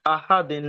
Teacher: করবেন নন সাকিনের পরে দাল এসেছে 15টি অক্ষরের মধ্যে দাল তাই নন সাকিন আওয়াজ এক আলিফ পরিমাণ গুনা করে পড়তে হবে